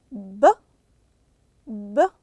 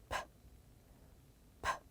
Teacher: You heard the B sound. The voice came out of your throat.